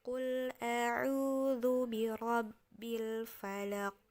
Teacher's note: jadi kayak qof ditambah ada O tetapi tidak disengaja ya jadi secara otomatis dia akan seperti mengarah ke huruf o